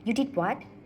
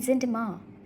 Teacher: Both use rising intonation to show emotions like surprise or doubt.